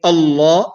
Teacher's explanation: Since it has a fatha, then the lam here, which is in lafzul jalala, which is the lam that is in the word Allah, or the word Allah, will be pronounced in the heavy manner